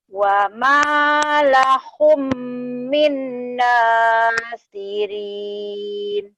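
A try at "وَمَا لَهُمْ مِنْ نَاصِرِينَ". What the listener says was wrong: Shad nasirin. Shad ya nasirin.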